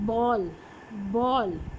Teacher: बॉल बोलने के लिए जो ब साउंड है, तो मैंने वो क्या किया है कि दोनों लिप्स को मिलाया है